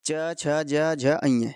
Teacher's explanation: च वर्ग का उच्चारण स्थान होता है तालव्य से च छ ज झ अ ये पांचों ही वर्ण तालव्य से बोले जाते हैं